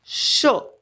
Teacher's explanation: शचा उच्चार करताना मुखातील जी हवा आहे तिचे घर्षण होते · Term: घर्षक